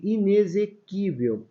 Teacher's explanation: esse X Ele tem um som de z ele tem um fonema Z